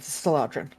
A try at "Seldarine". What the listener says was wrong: It depends, Seldarine, and it depends on what you want to know about it. Well, it's Seldarine and not Seladrine. The D comes before the A.